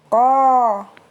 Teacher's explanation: Dan tambahan catatan, huruf ko ini adalah huruf yang tebal, termasuk huruf tebal. Jadi untuk menebalkan huruf ini, pangkal lidah kita naikkan. · ko diucapkan dengan tidak disertai udara yang keluar dan dia merupakan huruf tebal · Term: huruf qaf